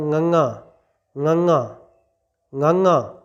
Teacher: simple ਹੀ ਜ਼ੁਬਾਨ ਨੂੰ ਹਿਲਾਏ ਤੋਂ ਬਿਨਾਂ ਕਿਸੇ ਪਾਸੇ ਮੋੜੇ ਤੋਂ ਬਿਨਾਂ ਨੱਕ ਰਾਹੀਂ ਬੋਲ ਦੇਣਾ